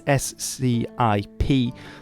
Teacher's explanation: So originally it would have been pronounced as a K, but in Old English, and I believe in the Anglo-Saxon languages, so in Frisian as well, you see this, the SC is pronounced as a sh